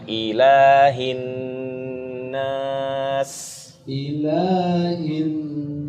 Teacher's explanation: gunahnya ditahan dua harakat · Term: ghunah, Gunnahnya